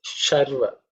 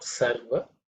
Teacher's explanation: it's a palatal Sha. Sa is actually dental.